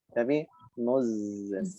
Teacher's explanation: Tidak langsung muzan, tapi muzan. Memanjang karena sifat dari huruf zai itu berupa rokhawah dengan suara yang memanjang. Mengantarkan bunyi zai kepada nun sukun.